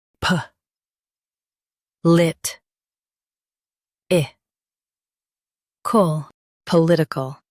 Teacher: Stress lit and keep ickle soft.